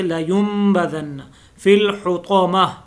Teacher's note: جب نون ساکن یا نون تنوین کے بعد با آ جائے. یہاں پہ نون ساکن ہے اور اس کے بعد با آیا ہے تو یہ نون جو ہے یہ میم سے بدل جائے گا